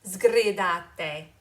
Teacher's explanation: make sure that that S becomes a voiced sound, which then really becomes a Z, sgridate. And then my last diction warning has to do with double consonants.